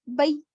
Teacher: نرم آواز سے پڑھیں گے, اور معروف پڑھیں گے, مجہول آواز سے بچائیں گے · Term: یالین